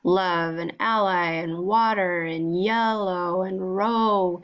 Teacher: you could draw these sounds out and keep them going and that's how you know that they're liquids they're words that just you can keep that going or yeah